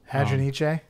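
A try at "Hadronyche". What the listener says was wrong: Yeah, I think you need to pronounce the E.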